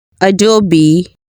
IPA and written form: əˈdoʊ.bi (Adobe)